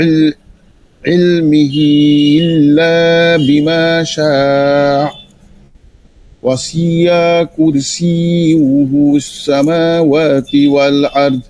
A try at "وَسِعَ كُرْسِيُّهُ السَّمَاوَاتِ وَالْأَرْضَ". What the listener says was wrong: ওয়াসিআ, ওয়াসিআ, এখানে এটা সবাই ভুল করতেছেন। ওয়াসিআ, ওয়াসিআ টান দেওয়া যাবে না কোনোটাই, হাতেও নাই, ওয়াসিতেও টান নেই। ওয়াসিআ কুর, ওয়াসিআ কুর, আকুর বলবেন, মানে দ্রুত কাফ ধরতে হইলে এভাবে বলতে হবে, ধীরে ধীরে ঠিক হয়ে যাবে। ওয়াসিআ কুরসিয়্যুস সামাওয়াতি ওয়াল আরদ।